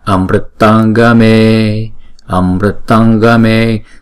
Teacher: Nhưng mà đứng theo sau chữ nó là chữ G, chúng ta đọc bằng phần guttural ở trong cổ họng, thì chúng ta phải chuyển chữ Anuswara này thành chữ ng.